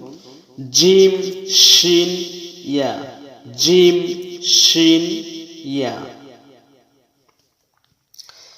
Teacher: দেখুন, ৬ নম্বর মাখরাজ জিহ্বার মধ্যখান তার বরাবর উপরের তালুর সঙ্গে লাগাইয়া ৩টি হরফ উচ্চারিত হয়